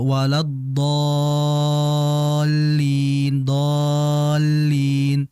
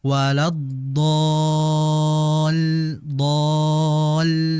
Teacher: Ada sedikit di situ hentakan di ujung menandakan bahwa di situ ada lam yang musyaddad yang bertasydid. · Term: nabr